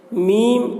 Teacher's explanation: مد لازم حرفی مخفف کو 3 یا 4 الف کے برابر کھینچ کر پڑھیں گے، اور میم کے اوپر تشدید ہے، اس لیے میم کی آواز کو ناک میں لے جا کر 1 الف کی مقدار کھینچیں گے، اس کو غنہ کہتے ہیں۔